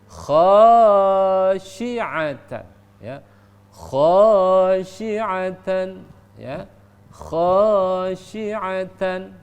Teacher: Di sana ada kha, maka kha itu dibaca panjang karena ada alif di sana.